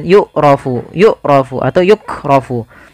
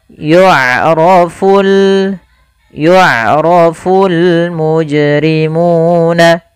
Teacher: Pada lafal bacaan yu'rafu, di sini ain memiliki sifat yaitu sifat bainiyah, yaitu suaranya tidak terlalu dialirkan dan tidak pula terlalu ditahan. Maka tapi hati-hati jangan dibaca dengan yu'rafu atau yukrafu. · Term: huruf ain